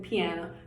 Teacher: the p is voiceless and the rest of the word is voiced